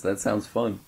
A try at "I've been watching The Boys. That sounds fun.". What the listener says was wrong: I've been watching The Boys. That sounds fun. No, not like that. It sounded like you're saying that watching The Boys sounds fun.